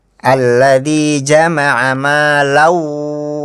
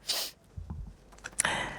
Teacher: Maknya juga harus dibaca panjang 2 harokat.